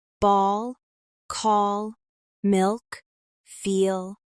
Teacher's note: the tongue is pulled slightly back in the mouth, and there's a deeper, darker tone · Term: dark L